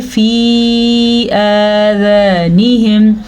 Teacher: یا ساکن ہے اور یا کے اوپر مد بھی ہے تو اسے ہم لمبا کر کے پڑھیں گے، مد کی مقدار جتنا ہم اس کو پڑھیں گے فی آذانہم، تقریباً یہ 3 سیکنڈ تک لمبی ہوتی ہے۔